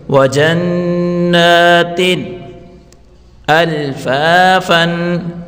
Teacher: دو زیر کی تنوین کے بعد حروف اظہار کا ہو یعنی حروف حلقے ہیں تو یہاں غنہ نہیں کریں گے. وَجَنَّاتٍ اس تا کو ظاہر کر کے پڑھیں گے.